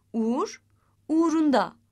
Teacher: Uğur uğrunda u sesi düşmüştür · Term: hece düşmesi